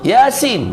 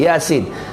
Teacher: Mad asli thunai baca dengan dua harakat.